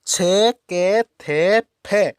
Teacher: छ, के, थे, फ, ये ध्वनियां क्या है? अघोष है।